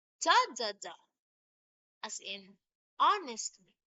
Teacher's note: It's actually the opposite now of anapest, having stressed, unstressed, and unstressed syllables. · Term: dactyl